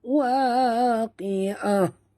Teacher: Okay, ini adalah ta marbutah ya sahabat. Bila kita waqaf, yang berbunyi ialah huruf ha ya.